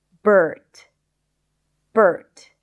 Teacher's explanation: the stir sound that in American English, it is always associated with the R sound